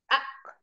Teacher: ketika kita mengucapkan Hamzah sukun suaranya tidak mengalir a langsung terputus a misalnya ya kita sukunkan huruf hamzah a